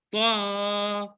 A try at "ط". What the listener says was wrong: ایسا جھٹکا دے کے نہیں گو. تو ایسا نہیں، تو.